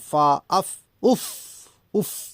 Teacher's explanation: جب ہم اف کہتے ہیں نا تو ہمارے اوپر کے دانت نیچے کے ہونٹ کے ساتھ لگ جاتے ہیں۔ اف اگر نہیں لگیں گے تو فا ادا نہیں ہوگی۔ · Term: فا کا مخرج